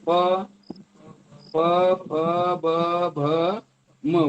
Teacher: ओठातून ओठ चिटकल्याशिवाय आवाज येत नाही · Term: ओष्ठ व्यंजन